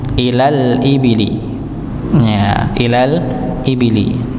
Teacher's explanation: Jadi kalau qamariyah yang tidak terbaca adalah hamzahnya. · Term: alif lam qamariyah